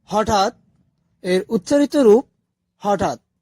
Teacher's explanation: অন্তস্থ অ্যঞ্জন ধ্বনিমালায় কোন স্থান পায়নি খন্ডত হচ্ছে ত এর খন্ডরূপ ত এর সাথে স্বরধ্বনি যুক্ত না হলে ত আর খন্ড ত একই উচ্চারিত হয়